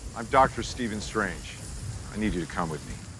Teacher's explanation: is at stake there's a tendency for english people to nasalize there's this extra kind of nasality to his american accent that he doesn't necessarily have in his english accent · So again, yeah, that very bright in doctor. You can hear that there's kind of extra layer of nasalization compared to Robert Downey Jr., who's obviously using his own accent. But when you hear them back to back, you can kind of hear that there's just that extra kind of push from Benedict Cumberbatch.